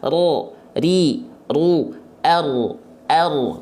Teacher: Karena huruf ro, teman-teman sekalian, dia punya salah satu sifat yang disebut dengan warro wabitakririn ju'il. Ro itu memang dia bergetar lidahnya gitu, tapi dia nggak boleh terlampau berlebihan seperti huruf R. Kenapa? Karena dia punya sifat takrir, bergetar tapi sedikit.